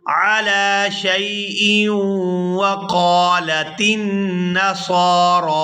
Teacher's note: اگر ہم یہاں پر وقف نہیں کرتے تو پھر حمزہ کو واو مشدد کے ساتھ ملا کر پڑھیں گے